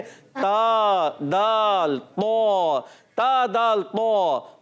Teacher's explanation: तो ये ता और तो है, तो जबान का सिरा और ऊपर के दांतों की जड़ों से अदा होता है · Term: हुरूफ नित्तिया